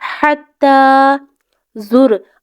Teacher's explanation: یہاں پر حتی نہیں پڑھنا، ہا کی آواز کو حلق کے درمیان والے حصے سے نکالنے کی کوشش کرنی ہے